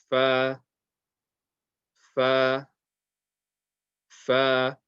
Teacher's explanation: the makhraj of this is the top teeth touching the inner part of the bottom lip. So the inside of your bottom lip.